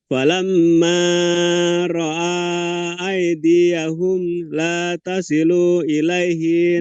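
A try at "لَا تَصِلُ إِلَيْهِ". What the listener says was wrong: La tasilu ilaihi. Lunya pendek.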